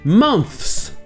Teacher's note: la version officielle, c'est de prononcer les deux sons. Le son th et le son se à la suite.